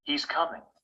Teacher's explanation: finish a statement we usually use falling final intonation he's coming the voice jumps up in tone on the most important word and then falls to a low tone